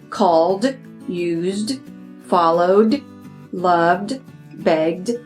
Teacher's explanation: sometimes the ed will sound like a d sound this is also a voiced sound in a voiced sound remember your vocal cords vibrate you can